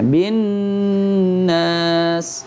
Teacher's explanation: Antum dengungnya kurang, harus minimal dua. Ya, jangan hanya satu harokat. Harus bin nas.